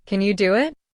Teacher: Hear how the W sound appears. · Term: intrusion